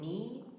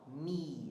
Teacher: English we say me and the ending vowel is a is a very front unrounded vowel